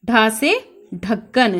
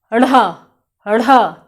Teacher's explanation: आपकी जबान ऊपर जाएगी मूर्धा पे और झटके के साथ नीचे गिरेगी या मूर्धा से झटके के साथ फेंक दी जाएगी, इसीलिए हम इन्हें उत्क्षिप्त व्यंजन कहते हैं।